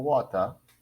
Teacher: as in water the r is very weak in the pronunciation